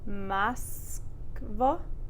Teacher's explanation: with that o, remember it becomes an a sound. It's one syllable before the stress. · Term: vowel reduction